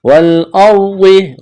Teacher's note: کرنا ہے، کڑا زبر ہے، الف کے برابر کھینچنا ہے، والارض، را ساکن سے پہلے زبر ہے تو را کو موٹا کرنا ہے